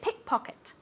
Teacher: remember that the accent goes in the first word pickpocket on the first syllable